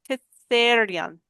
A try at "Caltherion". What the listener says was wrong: Caltherion. Oh, no, there is an L there. Caltherion.